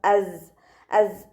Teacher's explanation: അലമ ഇവിടെ സ ഉച്ചരിക്കുമ്പോൾ സൗണ്ട് ഒന്ന് ക്ലിയർ ആക്കി കൊടുക്കണം അസ് അസ് ഒരു തേനീച്ചയുടെ മൂളൽ പോലെ ആ സൗണ്ടിൽ വേണം ട്ടോ സാ ഉച്ചരിക്കാൻ നമ്മുടെ നാവിന്റെ ടിപ്പ് കൊണ്ടുപോയിട്ട് താഴെ മുൻപല്ലിന്റെ ഉൾവശത്ത് കൊണ്ടുപോയി വെക്കുക ഇന്നർ പ്ലേറ്റിൽ